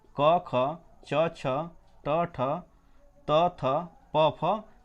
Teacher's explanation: इनके उच्चारण में केवल श्वास का सहारा लिया जाता है तथा गूंज या नाद उत्पन्न नहीं होता है। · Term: अघोष